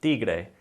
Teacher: Your tongue's gonna touch, again, the top of your teeth, kind of like with the D sound, and it's a much softer pronunciation than the T sound in English. The T sound, normally our tongue's touching the roof of our mouth. · The T sound, normally our tongue's touching the roof of our mouth. In Spanish, we're gonna move our tongue slightly more towards the front of our mouth, and it's a little bit softer sound than in English.